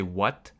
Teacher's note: words like what or when i don't pronounce the h · I don't pronounce the H when I say this